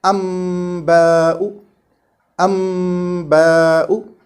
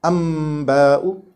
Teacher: This is done by closing the lips on both the letters, meme and ba, at once. Closing them on meme and opening on ba, like amba'u, amba'u. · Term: hiding this meme